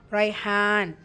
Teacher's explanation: ரா ஷத்தா இருக்குது, அழுத்தம் கொடுக்கணும். ஃபத்தாவில் இருக்குது, வல்லினமாக ஓதணும்.